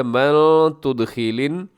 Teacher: اور من پہ اخفا ہے